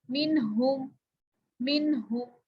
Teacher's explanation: जहाँ पे नून साकिन के बाद हरूफे हल्की में से कोई हर्फ आ जाता है वहां पे नून पे गुन्ना नहीं करते